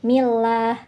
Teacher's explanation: lam jalalah pada lafaz Allah dibaca tarqik atau tipis karena didahului oleh huruf yang berharakat kasrah yaitu mi jadi bacanya millah gitu ya bismillahirah hir di sini